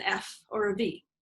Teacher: produced with the lower lip against the upper front teeth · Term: labial dental consonants